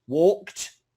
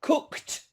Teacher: immediately after the hard consonant the D is also a hard consonant